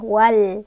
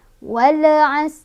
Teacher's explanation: lamnya dibaca jelas, tidak boleh mantul, tidak boleh ditahan ya, wal. Jadi jangan wal as, jangan, atau wal as, jangan ya.